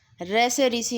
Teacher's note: र से ऋषि हमारा मूर्धा से बोला जाता है।